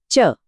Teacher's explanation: जीभ ऊपर तालू से लग रही है